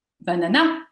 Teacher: l'accent lexical se trouve sur la deuxième syllabe